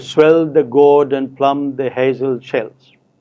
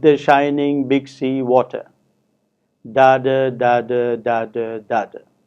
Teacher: the first line exemplifies iambic meter and the second line exemplifies trochaic meter